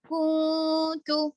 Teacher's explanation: نون ساکن کے بعد تا ہے حرف اقفا میں سے، اس لیے یہاں پر نون کی آواز کو چھپا کے پڑھیں گے، اقفا ہوگا.